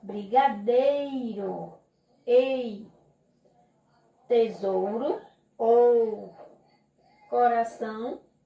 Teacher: ditongo, duas vogais na mesma sílaba